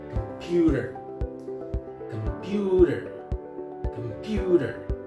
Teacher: Computer. So you can listen that I pronounce the word on the second syllable. Computer. So I give the unstressed syllable, come, okay, come, computer.